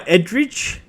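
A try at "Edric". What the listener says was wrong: I'm A Drake. A Drake. The E is pronounced like an A, you stupid buffoon. E Drake.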